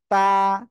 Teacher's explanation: জিহ্বার আগা 2 দাঁতের গোড়ায় লাগাবেন, লাগিয়ে উচ্চারণ করে দিবেন